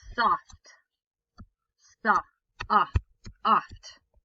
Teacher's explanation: The short O sound is like ah, which you might think of as A, but we say that's a short O sound.